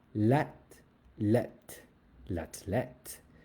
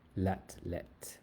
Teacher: TH in French does not go th. It just makes a t sound.